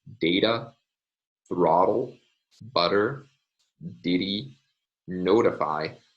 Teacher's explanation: are lots of words which are spelled with the sign but in north american english these are pronounced with a tap